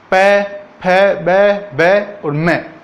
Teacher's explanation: अपने होठ आपस में चपकने के कारण इनका उच्चारण स्थान क्या होता है? ओष्ठ होता है।